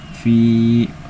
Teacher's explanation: Sebabnya karena ada ya sukun didahului oleh huruf bergaris kasrah di huruf fanya. Cara bacanya panjang dua harakat. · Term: matobi, matobai